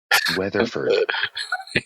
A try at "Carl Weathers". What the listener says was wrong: it's Carl Weathers, not Ferd. There's no Ferd. Weathers, like the weather outside.